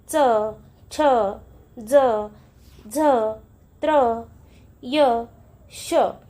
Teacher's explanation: यांचा उच्चार करताना आपल्याला य युक्त उच्चार करावा लागतो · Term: तालव्य वर्ण